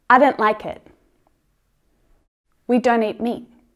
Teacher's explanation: You can choose whether you want to use the aspirated T at the end or not. In my accent, it's very, very common to hear the stop T.